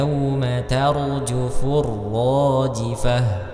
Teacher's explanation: huruf ro sukun sebelumnya fathah maka rnya dibaca tafkhim